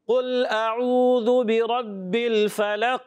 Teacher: قاف میں قلقلہ کرنا ہے، وقف کریں گے تو قلقلہ ہوگا قاف میں